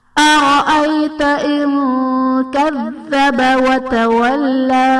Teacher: نون ساکن کے بعد حروف اخفا میں سے کاف ہے تو یہاں پر اخفا کا قاعدہ ہوگا، یعنی نون ساکن میں ہم غنہ کر کے پڑھیں گے